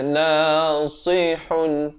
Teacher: Sa berbaris bawah bunyi si. Jangan baca nasihun. Salah kalau jadi huruf sin itu ya.